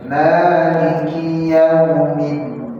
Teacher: Maliki yaumiddin jangan dipanjangkan, hanya layyin saja, diayun.